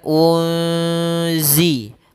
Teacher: Zai ini kita namakan dengan bacaan Ikhfa maka cara membacanya yaitu kita samarkan suara Nun ya kepada huruf Za